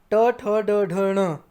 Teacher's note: तालु के थोड़ा सा पीछे अगर आप जुबान को टच करोगे मूर्धन्य वर्ण होते हैं